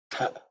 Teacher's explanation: Then the second letter is ta, which is the second letter in the ta varga, so it's aspirated.